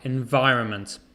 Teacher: The stress is on the vi.